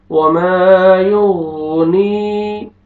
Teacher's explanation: یغنی، غین کو اپنے مخرج سے ادا کریں گے اچھی طرح تاکہ غین ادا ہو. یا مدہ، یا ساکن سے پہلے زیر ہے، نون کو اپنے کھینچنا ہے